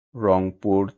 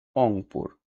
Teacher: আদি ব্যঞ্জন ছিল অন্তস্থ র সেটি পরিবর্তিত হয়ে অ হয়ে গেল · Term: আদি ব্যঞ্জন লোভ